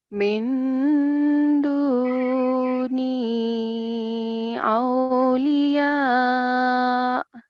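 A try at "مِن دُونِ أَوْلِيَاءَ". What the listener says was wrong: Not min, don't say min. Min duni. You have to hide the noon sound.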